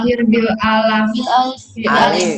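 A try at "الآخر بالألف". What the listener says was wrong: alif bukan alaf. Alif. Ya, alif.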